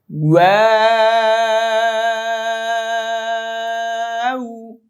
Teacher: ওয়া ওয়া, এটা ঠোঁট গোল করতে হবে, ওয়াও উচ্চারণ। ওয়া, আগে ঠোঁট গোল করবেন, পরে ছড়িয়ে দিবেন, তারপর আবার গোল করতে হবে